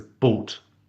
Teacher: some speakers leave off the diphthong and just say it as boat, like that.